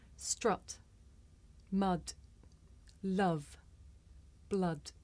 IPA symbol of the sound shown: ʌ